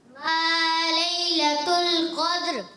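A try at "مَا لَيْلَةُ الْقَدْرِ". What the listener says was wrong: دال میں قلقلہ اچھا کیا، مگر را کو کیا کریں گے؟ پر رکھیں گے، اور اس کی آواز بھی آئے گی۔ دوبارہ پڑھیں۔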